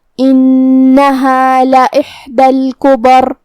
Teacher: کلمت الکبر یہاں کاف پہ پیش ہے اور با پہ زبر ہے، لہذا ہم یہ دونوں حرکات کو برابر سے ادا کریں گے. آخر میں حرف الراء پہ رکیں گے تو جزم سے رکیں گے، لہذا یہاں را کا حکم ہوگا تفخیم، تو ہم را کو موٹی آواز میں پڑھیں گے